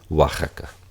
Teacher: la o antes de una a va a sonar como una u deslizada